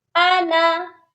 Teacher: یہاں پر بھی نون مشدد پر غنہ کریں گے، اور ادھر دیکھیے یہ لفظ ہے انا، اور اس لفظ میں اکثر لوگ مسٹیک یہ کرتے ہیں، اس کے جو نون کے ساتھ الف ہے اس کو بھی پڑھتے ہیں، یعنی نون کو کھینچ کر پڑھتے ہیں، تو یہ غلطی نہیں کرنی۔ اس انا کو ہم نے بنا کھینچے پڑھنا ہے۔ یہ قرآن پاک میں جہاں پر بھی یہ لفظ آتا ہے ہم اس کو بنا کھینچے پڑھتے ہیں۔